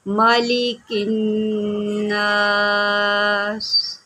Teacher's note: Next پڑھتے ہیں، مالک الناس۔ اب یہاں پر نون مشدد ہے تو یہاں پر غنہ کریں گے